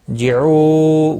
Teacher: جعو، واو مدہ ہے، ایک الف کے برابر کھینچ کر پڑھیں گے، وقف کی صورت میں نون ساکن پڑھا جائے گا، وقف بالاسکان ہوگا، 3 سے 5 الف کے برابر کھینچ کر وقف کریں گے۔